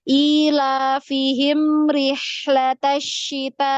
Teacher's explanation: mim sukun ini cuman satu ketukan juga ya karena dia alirannya sedikit